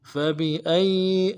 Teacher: حمزہ کو یا کے ساتھ ملانا ہے، یا کے اوپر تشدید زور دیں گے